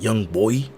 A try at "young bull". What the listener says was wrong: Anybody outside of Philly always say young boy. It's young bull. Just say bull.